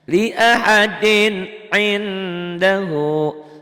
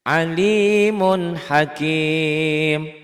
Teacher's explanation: dibaca netral, dibaca apa adanya, tanpa panjang, tanpa dengung, tanpa guna, tanpa ikhfa, tanpa ditahan, tanpa samar, tanpa melebur ya. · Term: idhar